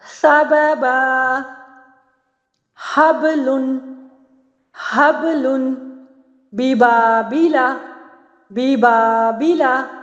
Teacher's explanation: اب یہاں پہ دیکھیے با جو ہے ہونٹوں کی تری سے ادا ہو رہا ہے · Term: با کی ادائیگی